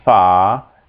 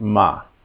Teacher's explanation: So you notice the first one is long, fa, and the second one is short, ma.